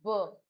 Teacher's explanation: बी is voice भी है, बाइलेबियल भी है, एंड प्लोजिव है, यानी कि स्टॉप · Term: voice bilabial stop